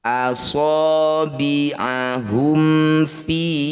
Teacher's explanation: idhar syafawi izhar artinya jelas syafawi artinya bibir jadi cara bacanya bunyi mim dibaca dengan jelas tidak usah dengung posisi bibir rapat